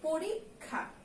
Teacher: আর যুক্ত খ থাকলে সেটা কিন্তু ক যোগ খ উচ্চারিত হয়। পরিক, এই পর্যন্ত একটা উচ্চারণ, তারপরে এটা হলো খা, পরীক্ষা।